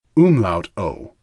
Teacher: There is not an English equivalent. It's closest to the I in girl, but you make your lips more rounded.